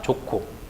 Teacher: 예사 소리와 히읗이 결합했을 때 거센 소리가 되는 겁니다